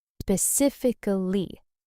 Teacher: The stress is on the second syllable, sif, and the full word has 5 syllables, specifically. The mistake most learners make is dropping the ick sound in the middle or stressing the wrong part.